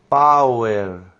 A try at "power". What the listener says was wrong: Power, more air.